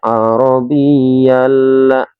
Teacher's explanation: Jadi cara bacanya arabiyalla ya, tidak ada pendengungan di situ. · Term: idgham bila hunnah